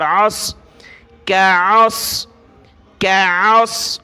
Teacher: باریک کاف ہے، کاف زبر کا، عین صاد زبر عص، عین کو گلے سے نکالا، صاد کے ساتھ ملایا، صاد کو موٹا پڑھنا ہے